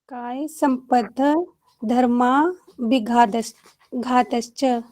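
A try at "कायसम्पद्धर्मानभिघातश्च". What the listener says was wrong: हाँ नभिघातश्च। काय संपद् धर्मा नभिघातश्च। धर्मा नभिघातश्च, ये ना भी साथ में पढ़िएगा। धर्मा नभि, नभि जैसे नाभि होती है तो यहाँ पे नभि है।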